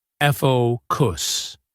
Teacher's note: The mistake is often putting the stress on the wrong syllable, like focus. The stress is on the first syllable and the o has a long o sound.